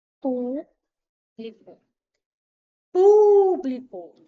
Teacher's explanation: O pu é a sílaba mais forte. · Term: proparoxítona